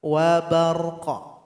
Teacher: Sukunkan huruf qaf dan berikan qalqalah.